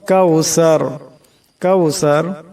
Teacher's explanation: সার আওয়াজটা নরম করে পড়তে হবে। আর এখানে দমসালে এই রা সাকিন হয়ে যাবে এবং রার আওয়াজটাকে মোটা করে পড়তে হবে।